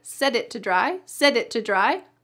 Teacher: the t at the end sometimes becomes a stopped t it it and the word to is reduced to dry you can understand a fast phrase like set it to dry set it to dry a lot easier.